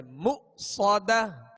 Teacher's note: یہاں حمزہ ساکن ہے، اس کو جھٹکے سے ادا کریں گے مؤصدہ. صاد کو سیٹی کی آواز میں اور پر پڑھیں گے